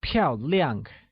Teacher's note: Liang also said with a falling tone · where 漂 is said with a falling tone means elegant, and 亮, also said with a falling tone, means bright.